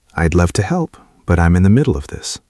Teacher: The voice goes down at the end of the sentence. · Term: falling intonation